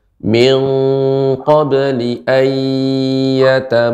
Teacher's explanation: idgham bil gunnah dipanjangkan gunnahnya